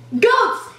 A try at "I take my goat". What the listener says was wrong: Goat. Yeah, goat, not goats, goat. Goat. Goat.